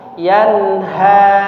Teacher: ha yang tebal ya, atau ha besar ya, bukan yang tipis, bukan yanha tapi yanha.